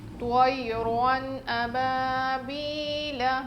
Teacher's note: تو موٹا پڑھیں گے، یا لین ہے جلدی پڑھیں گے نرمی کے ساتھ. طیرن را موٹا پڑھیں گے کیونکہ اس پر دو زبر ہے